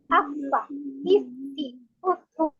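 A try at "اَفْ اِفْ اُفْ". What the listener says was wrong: Ufu. Sepertinya Ibu kurang mengalir itu. Hembusan hamsnya itu. Afa, ifi, ufu. Siapa tahu hamsnya sudah keluar, tapi ini karena kendala jaringan, akhirnya dia tidak terdengar sama saya.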